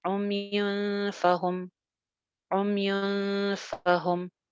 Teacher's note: اخفا کریں گے، نون کو تھوڑا سا چھپا کے پڑھیں گے